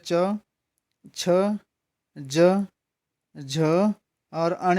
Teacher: ये च वर्ग की ध्वनियाँ कौन सी होती हैं, तालव्य ध्वनियाँ